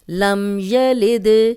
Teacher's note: دال پہ جزم ہے تو یہاں پھر ہم اس کو ہلا کے پڑھیں گے